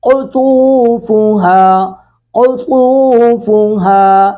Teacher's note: قاف اور طا دونوں کو پر کر کے پڑھیں گے